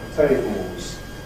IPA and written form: ˈteɪboz (tables)